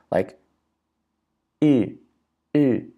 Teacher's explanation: this is a vowel that is front, but it's round